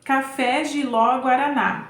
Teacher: Então, café tem como sílaba tônica a última, né? Que é o fé.